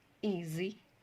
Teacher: s makes a z sound z when it is placed between two vowel sounds